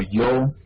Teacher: es el sonido que tenemos en palabras como yo, es la Y fricativa